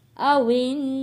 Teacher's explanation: نون کے اوپر ہم نے غنہ بھی ادا کرنا ہے کیونکہ یہ نون ساکن ہو گیا ہے